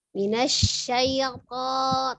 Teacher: Ujung lidahnya ada di pangkal gigi seri atas, tapi dia ditebalkannya.